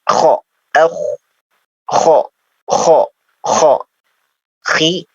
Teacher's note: Tidak tapi ya, karena dia terangkat ya. Pangkal dari lisan kita itu terangkat ya, yang mendekati tenggorokan. Itu terangkat ke atas. Jadi kho tidak kho tidak terbuka ya, tapi agak tertutup. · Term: huruf isti'la